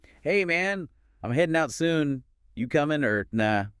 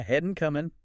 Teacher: Did you notice the dropped G sound at the end of headin' and comin'